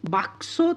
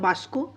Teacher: অর্থাৎ ক আর স স্থান পরিবর্তন করছে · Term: বর্ণ বিপর্যয়